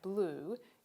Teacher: In Australian English, the vowel in words like blue is produced by most speakers as a high central rounded vowel, for which the correct symbol is a barred U, as this one here at the bottom.